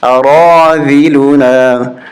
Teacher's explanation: را کے بعد جو الف ہے اس کو پڑھنا ہے اور را کو کھینچنا ہے